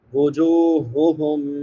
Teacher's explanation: بڑی ہا ہے، اقصی حلق سے حلق کے آخری حصے سے ادا ہوتی ہے جو سینے کے ساتھ ملا ہوا ہے